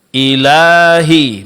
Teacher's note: Ilahi mad alif setelah huruf lam